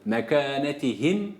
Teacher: mimde dudaklar kapandı Mehim dedik bitti